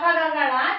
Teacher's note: कौन कौन सा वर्ग है, क वर्ग, च वर्ग, ट वर्ग, त वर्ग और प वर्ग। क वर्ग का उच्चारण हम लोग कंठ से करते हैं।